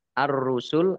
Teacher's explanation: alif lam syamsiah karena tidak dibaca langsung masuk ke huruf berikutnya yaitu ro ditandai rnya ada tasdidnya rnya dibaca dobel kemudian rusul wakaf dibaca